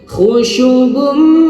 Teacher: panjangnya dua harakat pakai gunnah, dengung ya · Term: idgham bi gunnah